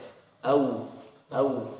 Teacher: waw layyinah ya, ketika sukun sebelumnya fathah. Nah itu makhrajnya dari ujung bibir saja